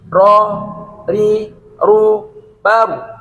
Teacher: Kalau di fathah ro akan menjadi tafkhim tebal, kalau di kasroh dia akan tarkik suara kecil, tipis, dan kalau di rumah dia disukun itu juga akan menjadi huruf tafkhim tebal.